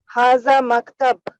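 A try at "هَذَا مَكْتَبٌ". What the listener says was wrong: মাকতাবুন পুরোটা বলতে হবে।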